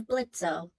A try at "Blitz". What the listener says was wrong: It's pronounced Blitz. It's Blitz. The O is silent.